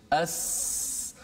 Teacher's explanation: Hujung lidah ini, hujung lidah ditekankan di belakang gigi bawah. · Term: huruf Sin